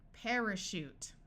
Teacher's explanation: Parachute. Notice the AR is followed by another vowel, so it says air instead of R, and this A schwas, it takes on the muffled sound.